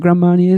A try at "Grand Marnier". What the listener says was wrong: And don't sound the D on grand.